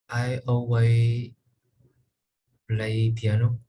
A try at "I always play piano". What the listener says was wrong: I always play piano. Okay, be careful just to make sure you pronounce the S on the end, okay? I always play piano. I always play piano.